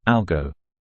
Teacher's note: in the short form, algo, we pronounce the O as a long O sound